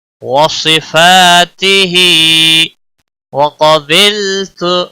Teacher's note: قاف کو موٹا پڑھیں گے، حروف مستعلیہ میں سے ہے، باللام کو ہلانا نہیں، تو کو کھینچنا نہیں۔